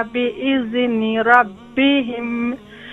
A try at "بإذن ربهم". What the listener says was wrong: بإذن. Don't do قلقلة on the ذال. Make soft and control. بإذن ربهم.